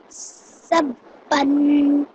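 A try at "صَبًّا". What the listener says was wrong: This is a sad. It's a slightly thicker, heavier sound. Okay, you just have to round your mouth a little bit more.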